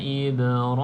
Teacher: ba sukun ni kena ada lantunan kecil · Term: Qalqalah